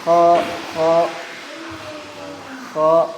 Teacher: itu hurufnya kedengaran tebal tapi dia bukan dengan memonyongkan Bibir